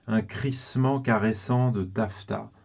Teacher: avec tous ces occlusives avec un r crisment caressant et puis toutes les consonnes fricatives les fe dans tafta et puis les S évidemment de crissement et caressant